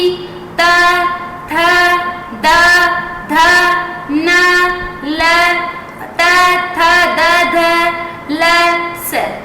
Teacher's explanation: और जब दांत सीधे आपकी दांतों को टच करेगी तो कहलाएगा दंत। री देखो, जो आपकी जीभ है बिल्कुल दांतों से टच करी अंदर की साइड में